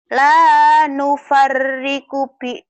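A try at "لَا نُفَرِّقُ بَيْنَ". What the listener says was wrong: baina. La nufarriku bina. Baina bukan bina. Baina lin ya.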